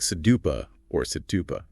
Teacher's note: That soft d or flap t sound is very common in North American English especially.